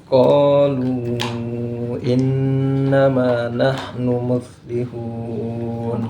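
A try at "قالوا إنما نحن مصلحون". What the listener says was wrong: Oke untuk qolu itu sudah lebih dari dua harakat qolu tapi kalau bagus itu e innama Harusnya sama ma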